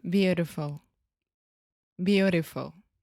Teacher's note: 99.9% of all the English speakers will say beautiful beautiful so that is again the flap T